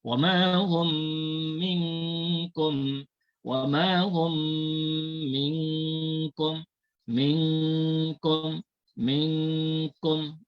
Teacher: Tapi kalau minkum ni dia ikhfa juga, tetapi ikhfa ni dia kena bunyi seolah-olah kalau ejaan Rumi dia ada huruf G. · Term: ikhfa hakiki